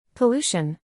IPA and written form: pəˈluː.ʃən (Pollution)